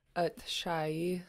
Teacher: we have a long low vowel, this ah, followed by a short high vowel